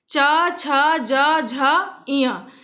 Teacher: हमारी जो जीभ है वो हमारे तालू में जाकर स्पर्श करती है, हमारे तालू को टच करती है, तब इन वर्णों का उच्चारण शुद्ध रूप से होता है। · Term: तालु से उच्चरित व्यंजन